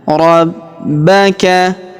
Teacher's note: Huruf ba kita tahan dan tekan karena terdapat tanda tasydid di atasnya.